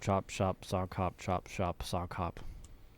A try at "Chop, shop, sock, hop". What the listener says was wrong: I think you said shock on that last one.